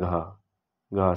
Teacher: और सघोष महाप्राण में आता है घ